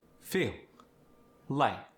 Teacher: light and feel in English are a harder pronunciation. In South African pronunciation, it's softer